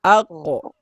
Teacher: Kalau huruf qo dan tho bunyinya O